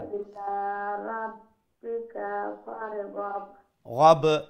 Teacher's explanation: বা যখন সাকিন অবস্থা আমরা পড়বো তো সেখানে কালকালা করতে হবে, ওই যে একটা দবনি আসতে হবে সেখানে وإلى ربك فارغب গাব এইরকম।